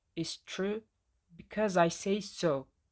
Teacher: my pitch rises then falls and it sounds more authoritative or argumentative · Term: Rise fall pattern